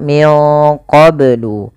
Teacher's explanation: bnya harus dipantulkan karena ia ada bacaan qalqalah